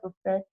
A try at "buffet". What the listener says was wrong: So just this one word, buffet. You don't pronounce the T on the end of it. Buffet. Buffet. Yeah, we have a lot of silent letters in English, and that's one of them.